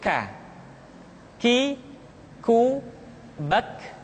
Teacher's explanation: Diucapkan dengan mengangkat pangkal lidah kita ke posisi di depan huruf Qaf. K. Diucapkan dengan mengalirkan nafas kita. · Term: huruf K